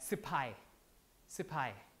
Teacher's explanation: korean people usually uh aspirate this p